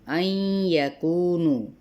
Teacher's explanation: ان یکونو، یہاں پہ ادغام مع الغنہ کا قاعدہ ہے